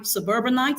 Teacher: Now the stress here actually falls on the second syllable. Now the reason this is is because um the suffix it is actually a suffix that is added to suburb okay to form that word.